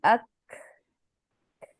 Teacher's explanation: जब आप काफ के लिए सिर्फ जबान को थोड़ा सा नीचे करते हैं तो आपको सांस की, हवा की गुजरने की आवाज आती है, अक, ये सांस आपको महसूस होती है।